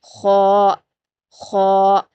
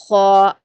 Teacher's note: लेकिन जो ख का मखरज है वो आपका जो सोफ पैेट होता है यानी हलक का ऊपरी हिस्सा वहां से अदा होता है। ख और थोड़ी सी खुरदुरी आवाज आएगी।